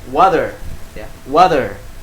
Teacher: Huruf T jadi seperti D. Kadang juga seperti L ya.